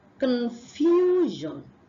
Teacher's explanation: there is a hidden yes sound after the F sound